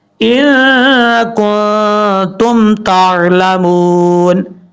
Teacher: یہاں پر دونوں جگہ پہ ایک الف کی مقدار غنہ کیا جائے گا کیونکہ یہاں پہ نون ساکن کے بعد کاف آ رہا ہے, یہاں نون ساکن کے بعد تا آ رہا ہے.